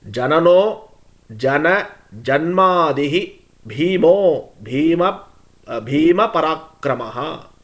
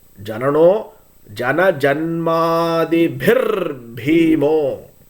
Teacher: Jana Janmadihi became Jana Janmadibhir because it is followed by Bha consonant. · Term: Visargam